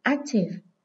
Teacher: Đây là tính từ có hai âm tiết, nên trọng âm dưới âm tiết số 1.